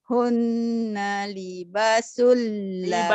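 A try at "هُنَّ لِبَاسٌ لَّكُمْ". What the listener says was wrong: Libanya panjang.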